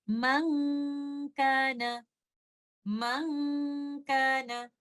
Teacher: And for letter kaf, the ghunnah is light. We hold the ghunnah for some time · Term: ikhfa